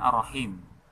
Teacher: Ya, jadi ada huruf R matinya, kemudian ada Ra hidup. Nah, pada saat mengucapkan huruf R mati, nah, di situ diusahakan hurufnya jangan lama bergetar. Jadi cukup bergetar 1 kali, selanjutnya langsung masuk ke huruf Ra.